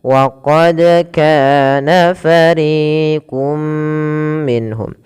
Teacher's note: Pada dasarnya kita membaca fariqun minhum, karena bertemu dengan mim tanwinnya dimasukkan, dan itulah yang kita namakan dengan idgham Yang kedua bi gunnah, artinya disertai dengan gunnah, disertai dengan penahanan dan memasukkannya ke rongga hidung kita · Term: idgham bi gunnah